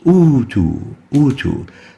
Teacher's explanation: the second hamza is exchanged with a waw in this case, and that waw is to be lengthened for a duration of 2 units, similar to that of the natural original med.